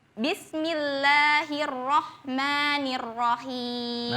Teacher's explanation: sempurnakan harakat fathahnya ya, jangan me, me. Nanti, nanti beda itu, itu imalah.